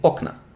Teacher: to make it plural and keep the stem hard getting okna the stress switches to the stem